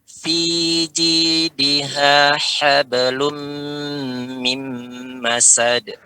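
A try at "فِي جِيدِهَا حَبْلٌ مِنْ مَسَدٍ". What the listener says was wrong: Pada lu-nya ini enggak kedengar ada kedepankan lu-nya, Pak. Bibirnya benar-benar dihabiskan. Fi jidiha hablum benar-benar habiskan. Balikkan. Tapi balikkan, Pak. Monyongnya tadi lum balikkan.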